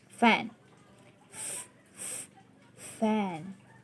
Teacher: the word fan by giving emphasis to the consonant f is you cannot feel any vibration at all on your vocal chord that means that the word fan or the consonant f is a voiceless sound